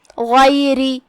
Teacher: را کا حکم ہے ترقیق کیونکہ اس کے نیچے زیر ہے، لہذا را کو ہم ہلکے سے پڑھیں گے.